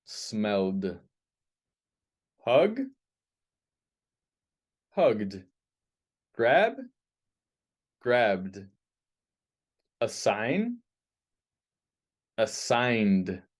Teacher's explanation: if there's a vibration, it's a voiced sound, and you say d. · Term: voiced sounds